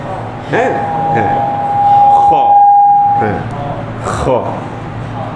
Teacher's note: খটা হচ্ছে আমাদের বাংলা খ এর মত খ এই সাউন্ডটা আসতে হবে কিন্তু একটু ঝাজালো খসখসে